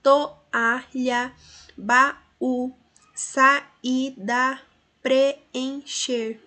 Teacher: Essa separação indicada na fala mostra que essas vogais, quando se separam, ficam em sílabas diferentes. Essa separação de duas vogais em sílabas diferentes é o que chamamos de hiato.